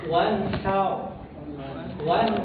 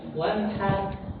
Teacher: Jadi takhim itu mengumpulkan suara di dalam mulut. Suara itu ngumpul di dalam mulut ya. Jadi dia mufakhamah. Mufakhamah suaranya itu tebal di dalam mulut.